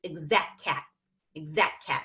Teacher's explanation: D here so that exact that exact cat on his lap notice I didn't even put a T in exact